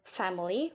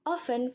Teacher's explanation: it is the sound in which there is a constriction between the lower lip and the upper teeth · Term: labyodental sound